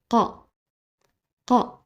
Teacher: se prononce en collant le fond de la langue sur le palais le son se fait au fond de la gorge non dans la bouche